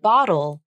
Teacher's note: In the word bottle, the L is a dark L because it is the final sound. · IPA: /ˈbɑ.ɾəl/